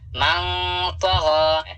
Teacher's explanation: غین کے اوپر کھڑا زبر ہے, اسے تھوڑا کھینچ کر پڑھنا ہے